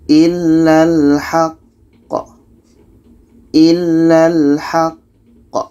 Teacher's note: Cara bacanya, qa ini kita berhenti sejenak atau 2 detik. Setelah itu kita pantulkan. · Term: qalqalah akbar